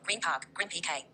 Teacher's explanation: N becomes M before P. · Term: assimilation across words